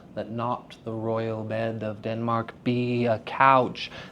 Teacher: The soft D's, the let not, you see how let is schwad out in this context because it is not stressed